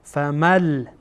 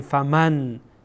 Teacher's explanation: بعد از نون ساکن لام آمده، لام از حروف ادغام هست، اینجا ادغام میکنیم